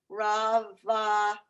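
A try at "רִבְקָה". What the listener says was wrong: Look under the resh. There's a vowel. Re. Here, Rivka.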